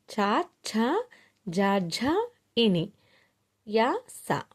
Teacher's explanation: ఇవి ఏంటంటే తాళవ్యములు, అంగిలి నుండి పుట్టేవి